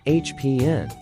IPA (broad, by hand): ˈhæpi.nɪs